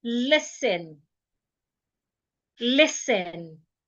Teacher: the letter T in the word is silent. The letter S in the word should not be pronounced as letter zed. It is letter S. S as in snake.